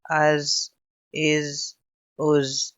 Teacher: حمزہ زا زبر از، حمزہ زا زیر از، حمزہ زا پیش از، یہ زا ہے، اس میں صرف سیٹی کی آواز نکلے گی، قلقلہ نہیں کریں گے